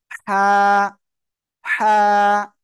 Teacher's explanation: গলা চেপে এক আলিফটা নিয়ে উচ্চারণ করতে হবে।